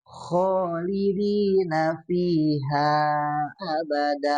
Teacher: huruf kho ini keluar dari tenggorokan bagian atas